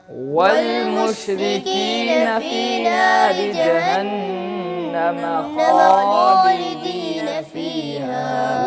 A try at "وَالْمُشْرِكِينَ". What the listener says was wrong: والمشرکین، یہاں پہ قاف بڑا پڑھا گیا ہے، یہاں پہ چھوٹا کاف پڑھنا ہے، دو نقطوں والا نہیں، دوسرا کاف پڑھنا ہے. والمشرکین